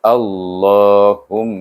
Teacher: mim itu bertasydid, baca dengan wajib gunah